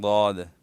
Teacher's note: زبان کی کروٹ اور اضراس اولیہ کی دانتوں کی جڑیں یہ جب آپس میں ملے تو اسے ضاد ادا ہوتا ہے، مخرج ان کا یہ ہے.